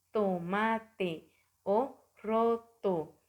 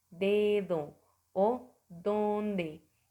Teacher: o bote y también tenemos los dentales se llaman así porque nuestra lengua actúan contra los incisivos superiores o nuestros dientes de arriba